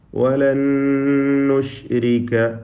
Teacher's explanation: ശബ്ദ് നൽകപ്പെട്ട ഒറ്റ നൂനിനെ മണിച്ചുകൊണ്ട് ഉച്ചരിക്കുന്നു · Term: ഇദ്ഗാം ബിഗുന്ന